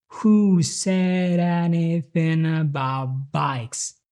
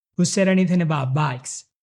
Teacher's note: Actually, the only word you can clearly hear is the word bikes, which of course is the pitched word. But the tone is always the same, very, very steady. This is because it's not a real question, which is basically the opposite of what did before. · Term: monotone